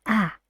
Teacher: Which part of the tongue goes down when you say ah? The back.